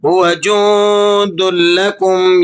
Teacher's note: نون پر آپ نے اخفا ادا کرنا ہے، نون ساکن ہے، ما قبل میں حروف دال ہے تو دال حروف اخفا میں سے ہے، آپ یہاں اخفا ادا کریں گے.